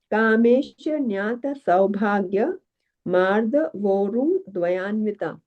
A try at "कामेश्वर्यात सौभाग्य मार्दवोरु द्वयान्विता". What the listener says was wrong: No, you don't stop and split like that. Mardhavorudvayanvita.